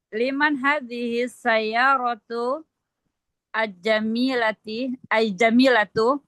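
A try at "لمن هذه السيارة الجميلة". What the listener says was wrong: Iya. Al-jamilatu. Iya. Al-jamilatu.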